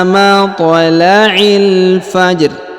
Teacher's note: huruf i langsung sambung masuk ke huruf lam yang berharakat sukun